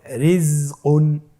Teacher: রয়ের নিচে জের রয়েছে, এই রটাকেও আমাদেরকে পাতলা করে পড়তে হবে